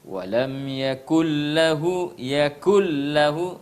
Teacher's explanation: suara nun sukun tidak terdengar karena sempurna melebur kedalam problem walam yakullahu kufuwan ahad kufuwan ahad Yes ada fathatain